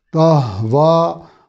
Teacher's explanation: ہا کو ادا کرتے ہوئے سینہ کھلتا ہوا محسوس ہونا چاہیے چونکہ حلق کے نچلے حصے سے ادا ہوتا ہے۔ واو پہ کھڑی زبر ہے، اور اگلے لفظ کا پہلا حرف چونکہ حمزہ ہے، انفسکم، اس لیے یہاں مد منفصل ہوگی 2 سے 3 الف کے برابر۔